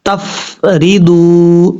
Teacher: واو مدہ ہے، ضاد واو پیش دو، ایک الف کی مقدار لمبا کریں گے